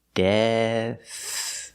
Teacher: So we start with a D with the tongue back behind the teeth. Death. And we finish with a soft TH sound like think and thank you.